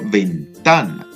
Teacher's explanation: la sílaba tónica se encuentra en la penúltima sílaba, o en el penúltimo lugar · en la sílaba ta, Ahí encontramos la fuerza de voz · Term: llano o grave